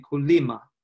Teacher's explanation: we have a high tone on the vowel of lim, so it'll be kulima.